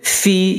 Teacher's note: Fi, ya mati mad asli atau mad tabai, panjangnya dua harakah.